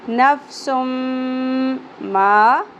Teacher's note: تنوین کے بعد یمنو میں سے میم آ گیا, ادغام مع الغنہ. نفسم ما زبر کے ساتھ الف حرف مدہ ایک الف کے برابر کھینچنا ہے.